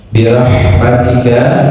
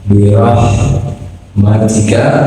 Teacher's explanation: huruf ha yang dialirkan saja, jangan sampai mantul ya, dia harus mengalir dan juga sertai nafas. Birahmatika, roh itu harus tebal karena barisnya fathah.